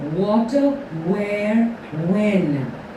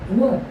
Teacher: So w is a bilabial approximant.